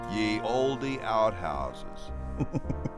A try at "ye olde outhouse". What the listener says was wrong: Well, there's no S at the end, so it's not outhouses. It just says ye olde outhouse.